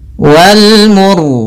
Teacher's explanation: rnya di sini kita baca dengan ra tebal disebabkan karena sebelum huruf ro yang disukunkan ada huruf yang dommah